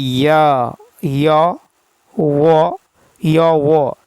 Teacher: अर्ध स्वर के उच्चारण में जिह्वा स्वरों के उच्चारण के तुलना में अधिक ऊपर की ओर उठती हैं, ठीक है, किंतु इतनी ऊपर तक नहीं पहुंच पाती कि वायु अवरुद्ध कर सके।